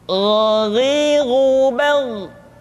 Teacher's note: yang membedakannya adalah Kha mengalir nafas dan G tidak mengalir nafas dan keduanya memiliki persamaan yaitu memiliki sifat al-istila sehingga kedua huruf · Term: huruf gho